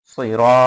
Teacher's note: সিরাতাল, হ্যাঁ সজ্জের সই, র আলিফ জবর র, সিরা, এক আলিফ টান হবে রতে